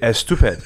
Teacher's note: persians can't pronounce s right without having an e at the beginning but only if there's a consonant after the s if there's a vowel then there is no e right right